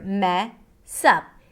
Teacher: The s of the word mess becomes the beginning of the next syllable which is up. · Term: connected speech